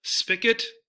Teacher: the G might not be a G sound, it might be a K